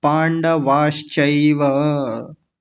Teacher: आप यहां थोड़ा सा रुके थे पांडवास ऐसा कर दिया था जबकि ये पूरा एक साथ आएगा